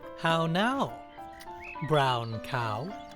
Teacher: if you listen you'll hear how each of those w's actually makes an u sound